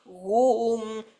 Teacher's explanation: Tapi kita gunakan tengah lidah ke lelangi atas untuk hadkan pernafasan